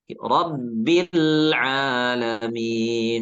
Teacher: Kemudian huruf lam pada rabbil alirkan sedikit karena sifat tawassut ya, sifat tawassut pada huruf lam itu sehingga dialirkan sedikit suaranya.